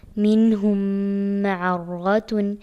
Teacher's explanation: نون کو ظاہر کر کے پڑھا اور غنہ نہیں کیا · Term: اظہار